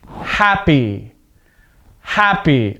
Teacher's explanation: the stress is at the beginning of the word